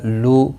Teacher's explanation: لو کو واو مدہ ہے، ایک الف کی مقدار کے برابر کھینچ کر پڑھیں گے